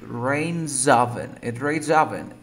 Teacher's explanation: before the S, we have a vocal cord sound like rain. You pronounce like Z, right?